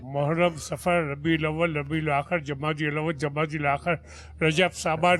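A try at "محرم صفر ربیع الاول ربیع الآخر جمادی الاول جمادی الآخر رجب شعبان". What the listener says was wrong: سانس ٹوٹ گیا آپ کا. سانس ٹوٹ گیا بابو, سانس ٹوٹ گیا جو ہے نا کہ ایک سانس میں ایک سانس.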